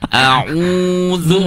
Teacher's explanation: ketika membaca au itu mencucu. U-nya mencucu, zu-nya juga mencucu.